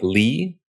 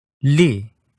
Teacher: in English when we say a name like Lee the back and front of your tongue both both come up towards the roof of your mouth Lee but in Portuguese only the tip of your tongue comes up and it reaches just behind your Upper Front Teeth Le English